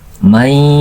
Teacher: ketika mengucapkan mai, larikan ke hidung, ke pangkal hidung supaya menghasilkan guna. Mai panjangnya 2 harakat saja.